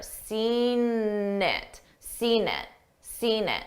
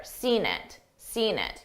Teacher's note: I use that n that n sound to connect the two words together.